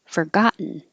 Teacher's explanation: it's not stressed, so it can just be for. Short.